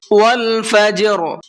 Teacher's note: جیم کے اندر قلقلہ کریں گے اس لیے کہ جیم حروف قلقلہ میں سے ہے اور اس کے اوپر جزم بھی ہے۔